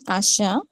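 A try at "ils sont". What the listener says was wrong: Okay, almost there, but ওই লাস্টের যেটা ইল সন্ট, ওই লাস্টের ত বা টিটা, এটা কিন্তু একদম নাই, এটা বলার সময় নাই। সাউন্ডটা হবে স, নাকের মধ্যে রেখে স।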